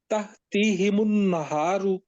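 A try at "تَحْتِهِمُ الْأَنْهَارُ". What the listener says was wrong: ज्यादा खींच लिया है ना, थोड़ा खींचे। ताहतिहिमुल, ताहतिहिमुल, ताहती नहीं कहना।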